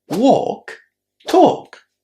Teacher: Walk and talk have a silent L. They're both pronounced with a long O again.